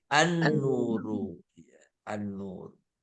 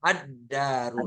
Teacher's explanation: kalau ketemu Al berarti lamnya hilang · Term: huruf Syamsiah